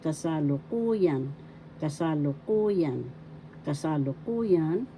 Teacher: First syllable ka, second syllable sa, third syllable lu, fourth syllable ku, fifth syllable yan. The fourth syllable has the accent.